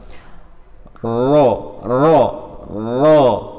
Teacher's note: Ro termasuk huruf yang bergetar, akan tetapi getarannya jangan banyak-banyak, tak lebih dari 2. Nah, ro ditahan ya, bukan ditahan tapi jangan digetarkan semua.